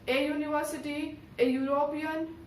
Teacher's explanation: when we pronounce the word university and European, the sound begins with Y, and that is a consonant